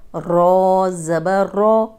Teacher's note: را پہ دیکھیں زبر ہے تو را موٹی پڑی جائے گی ، سا رو، اس کو سورو ایسے نہیں پڑھنا، اگر اگلا